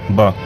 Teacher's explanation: ब जो वर्ण है वह अल्पप्राण भी है और क्या है घोस भी है